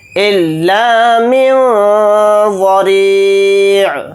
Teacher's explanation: نون کی آواز کو ناک میں چھپا کر اخفا کے ساتھ ادا کریں گے اور ضاد کو یہاں پر موٹا یعنی پر پڑھیں گے، اس